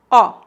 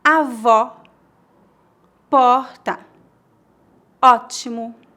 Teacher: Note que sempre que você vir este acento agudo sobre a letra O, indica que o som é aberto. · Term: O aberto